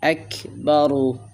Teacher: প্রথম অবস্থায় হলো রার উপরে যখন জবর অথবা পেশ হবে তখন রাটাকে পুর করে পড়বেন। এখানে দেখেন রার উপরে পেশ হয়েছে, আমরা রাটাকে পুর করে মোটা করে পড়ব।